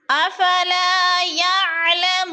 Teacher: افلا پہ الف مدہ، الف خالی سے پہلے لام کے اوپر زبر ہے، تو الف مدہ کو ایک الف کے برابر کھینچ کر پڑھنا ہے